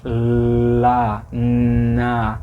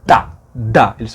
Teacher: Só que no caso de L e N, como eles não são sons oclusivos, não é como tá e dá, eles vazam